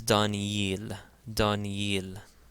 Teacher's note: the iota is going to have a Y sound because the eta is considered a vowel in Coptic